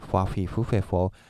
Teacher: these FS are not English F we don't use upper teeth and lower lip we just go just as this F we've learned in the